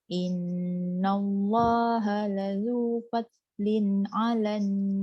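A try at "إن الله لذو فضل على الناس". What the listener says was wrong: Tebalkan sikit. Dot tu dah tak ada bunyi kol-kolah dah, betul dah. Cuma dia kena tebal. Fad.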